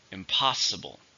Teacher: 4 syllables, stress on the second syllable.